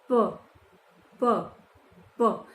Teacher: देखिए, जब आपने प बोला तो प जब हम बोल रहे हैं तो हमारे गले में यहाँ पे प प प कोई भी वाइब्रेशन ऐसे नहीं होता है या वायु बाहर नहीं निकलती है। बहुत हल्की सी वायु आपकी होठों के टकराने से जो घर्षण हुआ है वो वायु बाहर निकलती है। प प ठीक है, जो पहले से ही है वायु हमारे, जो हमने श्वास लिया है, जो थोड़ी बहुत एयर हमारे मुंह में रहती है, और जब हमने प बोला तो वो हल्की सी आपको बाहर महसूस होती है।